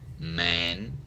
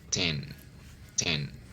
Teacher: Block the airflow with the tip of your tongue and then release through your nose. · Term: N sound